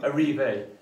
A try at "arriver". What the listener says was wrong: pas arriver, arriver. Voilà, parce que en plus, les mots en français en 3 syllabes, on n'a pas la montagne qui est au milieu, on reste complètement à plat.